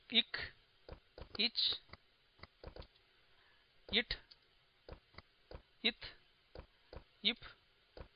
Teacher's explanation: ர் கச்சட்ட தபர அப்படிங்கறதுக்கு மேல புள்ளி வச்சோம்னாக்க இது வல்லினம் அப்படின்னு சொல்றோம் அந்த வல்லினம் எல்லாம் மார்பிலிருந்து பிறக்கின்றன